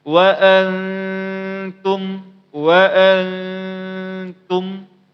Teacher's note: Pada hukum ikhfa ini dengungnya cuman dua harakat atau tiga harakat, maka dengungnya cuma sebentar.